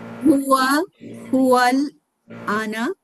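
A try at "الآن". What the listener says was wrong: ওয়াল আন ওয়া আল আন, জিনিসটা হচ্ছে মানে আনা বললে আপনার বোঝা যাচ্ছে আনা মানে আমি, জিনিস হচ্ছে আন মানে আলিফের উপরে কিন্তু একটা মান। ওয়াল আন ওয়াল আনা ওয়াল আনা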